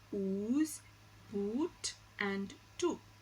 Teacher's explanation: So to describe the long oo sound, it is described as a back close rounded vowel, because oo, when you produce oo, you see that the lip is rounded, so it's a back close rounded vowel, and it occurs initially, medially and finally in the words ooze, boot and to.